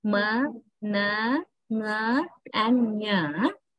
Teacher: there are four nasal consonants. Ma, na, nga, and nya. All these four nasals are voiced